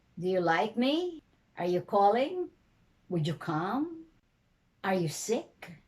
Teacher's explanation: you have a rising intonation and you don't go down if your questions can be answered by yes or no